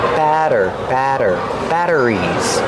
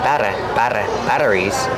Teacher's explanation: We see the double T making a fast D sound.